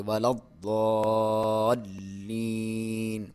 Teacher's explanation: اور ولد ضاد کے اوپر شد ہے, یہاں پہ دباؤ دے کے آپ پڑھیں گے ولضالین. لام کے اوپر بھی شد ہے, یہاں پہ آپ تھوڑا سا دبا کے ٹھہراؤ کر کے پڑھیں گے